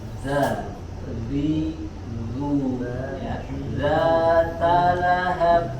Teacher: ujung lidah menempel ke ujung gigi sari bagian atas. Za, ya, zatalahab, huruf h di pangkal tenggorokan, kemudian huruf ba seperti biasa dipantulkan qol-qolah. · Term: huruf zal